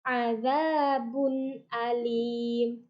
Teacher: jadi tidak mendengung tidak samar-samar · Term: izhar